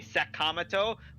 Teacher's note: when you say Sakamoto, we're putting more stress on the first syllable